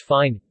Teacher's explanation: voiceless labiodental fricative, as in English fine